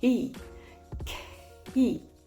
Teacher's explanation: si je commence en le murmurant et ensuite j'introduis la voix progressivement, key, key, ça me donne vraiment le phénomène de prononciation qui arrive beaucoup plus rapidement dans la vie réelle.